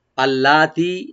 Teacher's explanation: আল্লাতি লামটাকে open করে একালে টানবো, তি একালে টানবে।